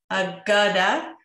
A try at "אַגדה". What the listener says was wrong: Agade, לא אגדה. אגדה זה עברית. Agade.